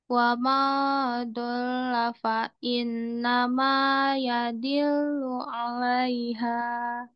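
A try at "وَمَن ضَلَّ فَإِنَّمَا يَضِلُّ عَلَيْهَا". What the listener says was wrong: dilu 'alaiha. jangan diayun-ayun ya. Kalau kalau dua harokat boleh satu ayunan, boleh diayun. Tapi kalau satu harokat jangan diayun, jadi terbaca dua lebih dari satu.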